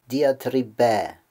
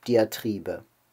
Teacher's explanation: Der Akzent im Deutschen sitzt also auf der vorletzten Silbe und außerdem ist auch das Ö hinten ein kurzes.